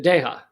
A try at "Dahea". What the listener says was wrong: No. Dahea? There's an A and an E.